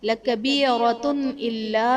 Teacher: تنوین کے بعد حروف حلقی میں سے حمزہ ہے تو یہاں پر اظہار کا قاعدہ ہوگا، یعنی تنوین میں ہم غنہ نہیں کریں گے۔